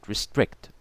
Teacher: an unstressed or weak syllable is followed by stressed or strong syllable like the word restrict overemphasized to make the point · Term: iambic